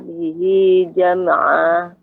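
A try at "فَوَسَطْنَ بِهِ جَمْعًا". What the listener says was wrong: Yang kedua ini malah Ibu tambahkan dengan hamzah. Fawasatna. Seharusnya tidak ada hamzahnya. Fawasatna bihi jam'a.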